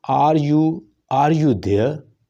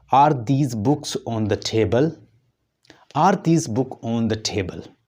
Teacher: लेकिन जब हम सिंगल पूछते हैं, सिंगल में तो वो क्या होता है, वो हमेशा राइज होता है उसके एंड पर, तो उसे हम राइजिंग जैसे कहते हैं